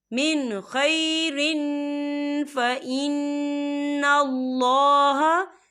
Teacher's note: तो हम यहाँ इजहार करेंगे और हम इसे बिना गुन्ने के पढ़ेंगे।